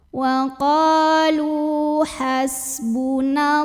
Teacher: Lu juga mad tabi'i karena ada waw sukun yang didahului baris dhammah, maka cara bacanya lam yang berbaris dhammah kita panjangkan 2 harokat saja.